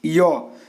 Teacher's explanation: तो य का जो उच्चारण स्थान है वो आपका तालु है